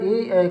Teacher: स्वर ए का उच्चारण स्थान कंठ तालु है